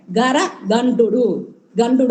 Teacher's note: మహాప్రాణం టకారం వాళ్ళకి లేదు అప్పుడు ఆ టకారాన్ని వాళ్ళు డకారంగా అక్కడ ఉచ్చరిస్తారు · మధ్యలో ఒక క వస్తుంది ఆ క ని వాళ్ళు గకారంగా అక్కడ ప్రొనౌన్స్ చేస్తారు